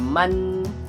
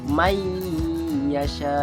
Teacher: Kita tidak baca man. Kita masukkan bunyi nun ke dalam huruf ya. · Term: idgham ma'al guna